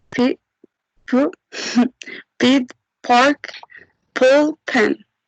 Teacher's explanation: Aspirated. The vocal cords remain open for a very short period of time after the lips come together to release the sound.